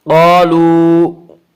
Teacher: قالو الف مدہ، الف ہمیشہ مدہ ہوتا ہے، الف سے پہلے زبر ہوتا ہے، الف مدہ کو ایک الف کے برابر کھینچ کر پڑھیں گے۔